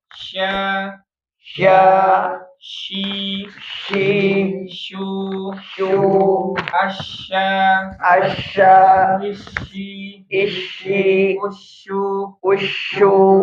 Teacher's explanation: Tengah lidah menyentuh dengan langitlangit ya. · Jadi tengah lidah ya. menyentuh langit-langit ya, tapi enggak menyentuh banget ya. Bawahnya kenapa ya agak ke bawah ya. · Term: huruf syin